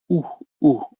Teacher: the Spanish U is with your tongue at the back of the mouth